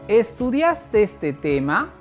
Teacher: al momento de terminar esta expresión, mi entonación se hace más aguda y se eleva. Por ello, se llama ascendente. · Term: entonación ascendente